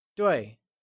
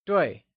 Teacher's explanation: Duì is pronounced using a falling tone